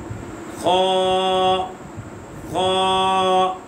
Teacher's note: یہ حلق کے اوپر والے حصے سے ادا ہوگا، اور اسے موٹا پڑھیں گے